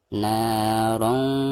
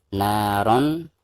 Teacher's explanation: Jadi suara tanwinnya itu harus didengungkan dan disamarkan ya. Jadi tidak boleh dijelaskan, tidak boleh dibaca naron ya, tetapi harus narong za.